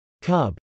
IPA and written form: kˈʌb (cub)